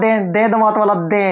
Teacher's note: दे जीभ कहां लग रही, दांत पर, इसलिए दंते होता है